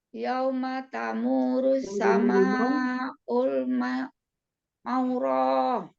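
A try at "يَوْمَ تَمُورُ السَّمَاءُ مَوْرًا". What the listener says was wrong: Sama U, nggak pakai ul.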